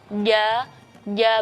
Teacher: Jim itu adalah sifat jahar berarti kita harus nahan nafas jadi nafas kita itu tidak boleh keluar ketika melafalkan huruf Jim